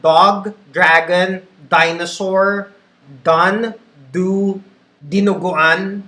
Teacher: When you say words like dog, dragon, dinosaur, done, do, dinuguan, whenever you say those words, inside your mouth, your tongue touches the roof of your mouth fully. It's fully closed.